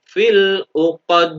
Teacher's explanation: Nah, terus mati karena wakof, maka dal masuk bacaan qalqalah kubro. Dibaca secara memantul lebih tebal.